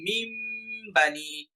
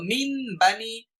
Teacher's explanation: এখানে মিন বানি ছিল, আমি এখন বলবো মিম বানি। সরাসরি দুই ঠোঁট লেগে যাবে, কারণ মিম উচ্চারণ করতে গেলে দুই ঠোঁট লেগে যায়। মিম বানি, সরাসরি মিম উচ্চারণ শোনা যেতে হবে। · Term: ইকলাব